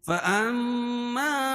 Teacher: میم مشدد میں غنہ ہوتا ہے, اس کو ایک الف کے برابر ناک میں آواز کو رکھیں گے